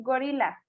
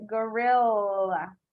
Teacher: Like the L is a lot longer. The L sound, gorilla.